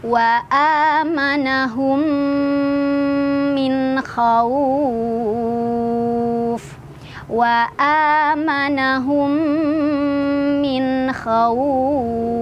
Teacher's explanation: kita masukkan mim pertama ke mim kedua, langsung fokus ke mim kedua sambil jangan lupa nahan dulu ya. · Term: idgomimi